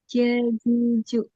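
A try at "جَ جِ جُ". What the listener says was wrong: untuk ji-nya udah bener, untuk ja sama ju-nya masih belum. Untuk posisi lidahnya coba samain kayak huruf Tetap dia dia diam, posisinya diam. Habis itu dia tuh kayak posisi bawah, lidahnya kan nempel sama bawah ya. Nah, dia tuh bareng ke langit-langit atasnya bareng. Ja, ja, ja, ja, ji, ju, ja, ja, ja, ja, gitu. Ja. Jadi kayak ditekan sedikit. Ja, ja, ja, ja.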